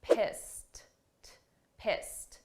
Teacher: this is an ED, a past simple verb, but the sound of that ED is a very soft T